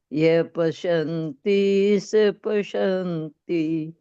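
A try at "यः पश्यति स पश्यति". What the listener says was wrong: पश्यन्ति कहाँ है? न कहाँ है? यह पश्यति स पश्यति। पश्यन्ति कहाँ है? न कहाँ है यहाँ?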